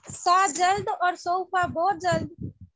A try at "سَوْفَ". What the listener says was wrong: نہیں، آپ سوفا جلد، سا بہت جلد. اتنا جلد کہ واو اور فے بھی نہیں بولا گیا آپ سے. تو اس ٹپ کو یاد رکھیں، پھر مانا نہیں بھولے.